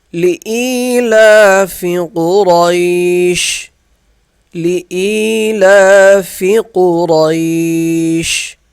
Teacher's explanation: لإیلاف قریش، لئی یہ ہے یا ساکن، اسے 1 الف کے برابر کھینچ کر پڑھیں گے۔ یا ساکن کے آگے لام ہے، اس کے اوپر کھڑا زبر ہے، اسے بھی 1 الف کے برابر ہم کھینچ کر پڑھیں گے